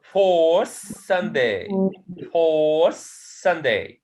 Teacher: Tha, it changes into sa before sa sound.